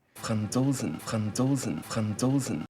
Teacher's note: When he says Franzosen, he pronounces the Z more like the English Z.